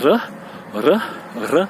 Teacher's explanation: c'est un R roulé, un R roulé, mais c'est pas un R très roulé, c'est un R légèrement roulé